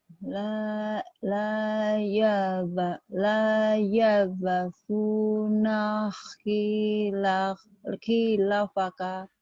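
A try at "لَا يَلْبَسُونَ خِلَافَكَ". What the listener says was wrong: banyak panjang. Khilafaka. La yalbasuna khilafaka.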